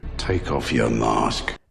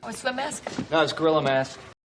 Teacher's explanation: mask with an ah sound in british english and an ä sound in american english